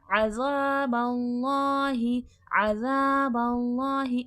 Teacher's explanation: अज़ाबल्लाहि आइन हुर्फ़े हल्की है, इसका मखरज है वसतुल हलक, हलक के दरमियानी हिस्से से आइन अदा होता है। आइन और हमज़ा को एक जैसा नहीं पढ़ना चाहिए।